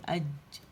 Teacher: جیم کے لیے تو کیا ہوتا ہے کہ غار سے چپک جاتی ہے زبان جیم کے لیے